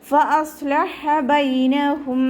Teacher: ഹ എന്നുള്ള അക്ഷരത്തിൻ്റെ സൗണ്ടിനെ തൊണ്ടയുടെ മധ്യഭാഗത്ത് തന്നെ കൊണ്ടുവരാൻ ശ്രദ്ധിക്കുക കേട്ടോ. ഹ എന്നുള്ള സൗണ്ടായി പോകരുത്.